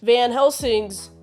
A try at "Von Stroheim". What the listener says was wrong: Von Stroheim. You've gone from mispronouncing Von Stroheim to, like, Van, just calling him Van, and then you called him Van Helsing.